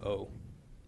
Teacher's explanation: in the Ashkenazic actually it makes it sound of sort of a short oh